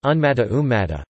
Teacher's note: In a sequence of two dissimilar nasals, the first nasal assimilates to the second nasal